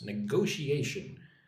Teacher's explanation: Put the emphasis on the second syllable.